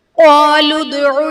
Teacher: قالوا ادع میں دال حرف قلقلہ ساکن ہے تو یہاں پر قلقلہ خوب ظاہر کریں گے